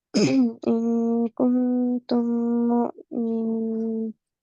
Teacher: গুন্না আপনি গুনবেন 1 2